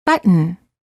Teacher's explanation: hold the t as in butt and then add an N without releasing the tongue from the gum Ridge